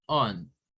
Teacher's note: el sonido de la ON es un schwa, es un on. No es on, no es lion, no es lion, on.